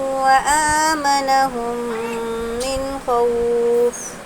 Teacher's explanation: یہاں پر بھی دیکھیں گے میم ساکن کے بعد میم ہے، تو یہ میم کو میم سے ملا کر غنے کے ساتھ پڑھیں گے، ادغام شفوی کا قاعدہ ہوگا۔